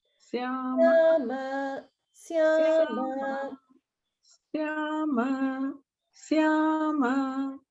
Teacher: Only thing is the syama. It goes immediately from a higher to the lower swara.